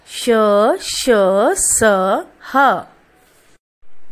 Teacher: इनका उच्चारण करते समय हवा मुख के अंतर्गत रगड़ खाने के कारण थोड़ी ऊष्म यानी गर्माहट हो जाती है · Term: ऊष्म व्यंजन